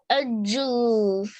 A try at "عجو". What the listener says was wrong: Okay, so remember, don't join the letters where they are not to be joined. These are separate letters.